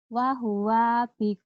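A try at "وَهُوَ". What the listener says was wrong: Wahwa bikul. Pendek. Wahwa bikul.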